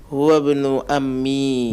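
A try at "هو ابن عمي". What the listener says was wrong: Nah, al-ain. Huwa ibnu ammi.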